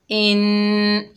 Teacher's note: नून मुशद्दद में एक अलिफ की मिकदार गुन्ना होगा